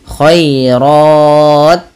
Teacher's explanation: sedikit saja dia panjangin dulu rnya khairat baru kasih hams